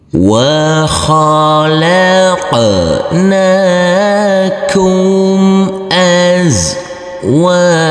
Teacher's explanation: Huruf wawu yang berfathah a ini bertemu dengan huruf alif yang tidak berharokat, maka huruf wawu kita baca panjang dengan panjang 2 harokat